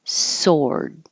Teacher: we don't say the W it's spelled with a W and you do round your lips but not as much